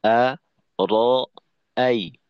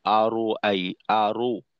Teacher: এখানে অনেক সময় দেখা যায় রয়ের উচ্চারণ মোটা করতে গিয়ে ঠোঁট গোল হয়ে আরো আই, আরো। জবরের উচ্চারণটা অনেকটা ওকার মুখী হয়ে যাওয়া